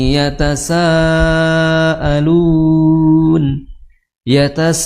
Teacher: Mad wajib panjangnya empat atau lima harakat itu opsinya hanya dua ya.